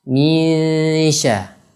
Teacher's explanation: Huruf shin juga tempat keluarnya di lisan, di lidah kita. Misha, ya, ini didengungkan, kemudian disamarkan, kemudian ditipiskan karena huruf shin itu huruf tipis. Ya, ini disebut juga dengan ikhfa.